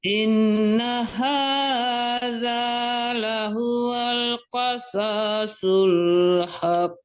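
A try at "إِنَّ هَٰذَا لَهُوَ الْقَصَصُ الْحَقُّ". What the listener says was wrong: Haq. Kok dipantulkan ya haq. Kok jangan tertahan juga di qasasul, jangan ditahan juga soalnya ya.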